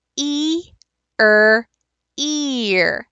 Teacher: so again we're not restricting the sound in any way but we are moving from an e to an ER sound so you're pulling your tongue back